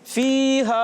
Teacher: एक अलिफ के बराबर खींच कर। एक अलिफ यानी 2 हरकत की मिकदार खींच कर पढ़ते हैं, लंबा करके पढ़ते हैं। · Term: मद्दा